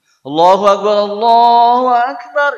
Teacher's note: Indonesia mah bebas ya mau o mau A tapi Arab punya a tipis O enggak boleh